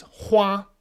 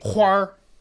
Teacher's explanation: you'll hear a lot of people especially from the north say huar and they'll only add the are when it means flower so